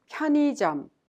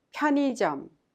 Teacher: Please pay attention to the pronunciation of the word 편의점. The second syllable 의 is pronounced like E instead of 의, which is a little bit hard to pronounce.